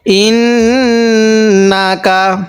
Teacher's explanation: হামজা লাগবে এই নুনের সাথে, ইন, নুন জবর না, ইন না, কাব জবর কা, ইন না কা। এই নুনের মধ্যে আমরা গুণনা করব, কারণ মিম এবং নুনের মধ্যে তাজদিদ হলে সেখানে গুণনা করা ওয়াজিব হয়। তো এখানে নুনের উপর তাজদিদ, এজন্য আমাদের এখানে গুণনা করতে হবে।